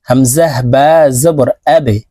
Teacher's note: বা কলকলার হরফ নিচের দিকে ধাবিত করে ধাক্কা দিয়ে উচ্চারণ করতে হবে।